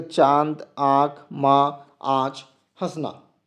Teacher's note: इसका उच्चारण करते समय हवा मुख और नाक दोनों से निकलती है, इसीलिए इसे अनुनासिक कहा जाता है।